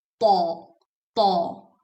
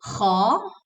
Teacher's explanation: for ta, the entire tongue goes up, whereas for kha, just the back of the tongue goes up